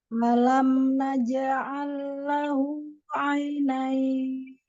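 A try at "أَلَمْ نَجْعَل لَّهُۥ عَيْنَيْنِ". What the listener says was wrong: Hamzah jelaskan. A-nya harus jelas. Ada ya sukun.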